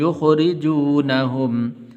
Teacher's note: را کے نیچے زیر ہے تو اس لیے باریک کر کے پڑھنا ہے